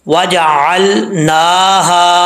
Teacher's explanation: नून के ऊपर खड़ा जबर है स्टैंड जबर इसको एक अलिफ की मदार लंबा करेंगे